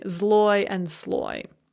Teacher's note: they both have a consonant followed by L, and that first consonant does not change its voiced or voiceless quality